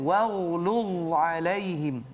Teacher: Jaga sifat isti'la pada ghain dan dha di situ